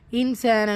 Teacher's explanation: நூன் சுக்கூனுக்கு அப்புறமா சீன் இஹ்ஃபாவுடைய சட்டம் நூனை பாதியாக மறைச்சு குன்னா செய்யணும். கூடவே அலிஃப் மதா 2 ஹரக்கத்தளவு நீட்டம் கொடுக்கணும்.